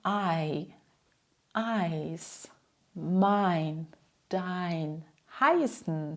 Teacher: Das bedeutet, du sprichst zuerst ein kleines A und gleitest dann zu I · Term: Zweilaut